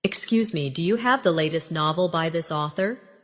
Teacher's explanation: In casual speech, do you often sounds like dia